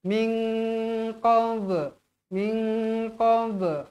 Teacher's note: nun kosong bertemu dengan huruf qf hukumnya ikhfa Hakiki wajib dibaca dengung dua harakat